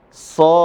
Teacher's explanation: Ya, mad arid lisukun. Tapi dengan bacaan kadar 6 harokat. 6 harokah. Ya.